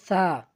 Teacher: জিহ্বার আগা সামনের উপরে দুই দাঁতের আগার সঙ্গে লাগাইয়া সুন্দরভাবে উচ্চারণ করব